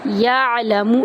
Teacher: یعلم، یا کو عین کے اندر داخل کریں گے، عین کو وسط حلق سے ادا کریں گے اور لمبا نہیں کریں گے کسی بھی حرف کو۔